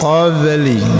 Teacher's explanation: sukun di tengah-tengah kalimat, maka dinamakan qalqalah kecil atau disebut qalqalah sughra. Jadi ada pantulan sedikit ya. Qabli, jangan terputus, jangan qab.